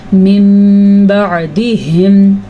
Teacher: نون ساکن کے بعد جب با آ جائے تو پھر اس وجہ سے میم پیدا ہو جاتا ہے، تو پھر نون کے بجائے میم پڑھا جاتا ہے۔ اس قاعدے کو تجوید کی روح سے اقلاب کہا جاتا ہے۔